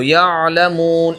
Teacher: साफ तौर पर झटका नहीं होना चाहिए। बल्कि बिल्कुल नरम अंदाज में ऐन निकलना चाहिए। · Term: ऐन साकिन